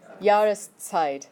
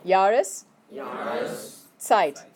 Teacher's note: So you say Jahres, and then you have to do something called a glottal stop, where you literally stop yourself from speaking, and then you say the Zeit, but you do it all as one word, because you need the Jahres, and then the Zeit.